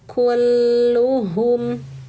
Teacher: Lamnya tahan dulu ya karena ada tanda tasydid